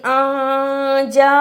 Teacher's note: ہے، اس لیے اس کو پڑھنا ہے الف زبر نون یعنی نون کی آواز کو تھوڑی دیر ناک میں چھپا کر غنہ کرنا ہے ۔ جیم کھڑی زبر جا، کھڑی زبر کی وجہ سے اسے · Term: اخفا